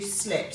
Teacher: So sleep goes to slept. So we shorten the vowel to a short et sound and we add the T